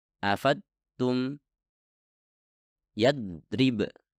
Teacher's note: Jika Anda merasa udara tersebut dikeluarkan dari bagian depan lidah dan bukan dari samping, maka ini berarti Anda telah menekan menggunakan tepi depan lidah, yang artinya Anda menghasilkan huruf dal bukan huruf dhad